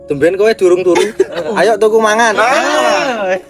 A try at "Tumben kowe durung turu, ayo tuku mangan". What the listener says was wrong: Nadanya itu loh.